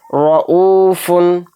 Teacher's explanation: تو دیکھیں را کے اوپر زبر آ گیا تو اس کو موٹا پڑھیں گے، را کو باریک نہیں پڑھیں گے